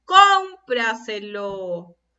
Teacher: ¿Y dónde estaba ubicada la sílaba tónica? En las palabras sobresdrújulas, en la anterior a la antepenúltima. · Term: palabra sobresdrújula